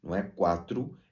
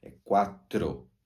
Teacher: deve ser pronunciada O de maneira bem clara, nunca uma U